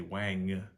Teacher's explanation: w is they say Wang if you hear the the NG we continue to Voice through it and hit and add a little bit of sound after we're done saying the NG